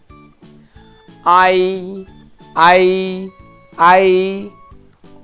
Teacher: there is no difference when I close my nostrils and when I open my nostrils that's all the same aye aye aye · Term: vowel sounds